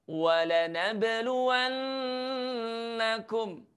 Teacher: pastikan ada huruf nun tasydid yang harus kita dengung